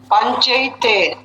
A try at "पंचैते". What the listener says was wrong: पंचई, चेते नहीं, पंचैते, आई एकदम खींच कर, पंचैते।